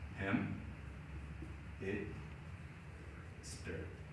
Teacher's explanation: high, narrow, unrounded, lax, and short